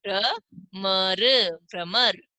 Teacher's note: भ के बाद में जो र की ध्वनि है पूरी सुनाई देगी